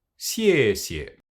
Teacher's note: The first syllable is on the falling tone and the second on the neutral tone.